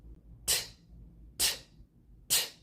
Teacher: There's no vibration in my vocal cords. It means it is a voiceless consonant.